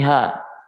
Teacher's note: kalau kita turunkan sedikit di bawah di tenggorokan paling bawah menjadi ha. Ya, sedikit aja turun.